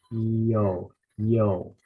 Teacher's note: pronouncing the Yota and the Omega together it almost has a y sound